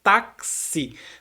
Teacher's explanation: O X ele está fazendo um som K e um som S ao mesmo tempo.